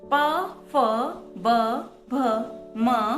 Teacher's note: प वर्ग वाले व्यंजनों का उच्चारण स्थान ओष्ठ